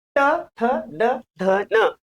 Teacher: याचा उच्चार करताना जीभ दाताला लागते, म्हणून आहे दंत्य.